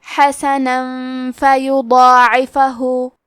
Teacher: قرضا حسنا، کلمت حسنن کے آخری میں نون پہ تنوین زبر ہے، پھر حرف الفاء آتا ہے کلمت فیضاعفہ، فا حروف الاخفاء میں سے ہے تو ہمیں یہ حکم کو غنہ کے ساتھ ادا کرنا ہے۔